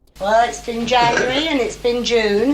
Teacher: she uses a rising nuclear tone on January and June and then a full rise nuclear tone on January again and